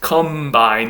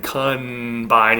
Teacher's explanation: you say it with an M due to assimilation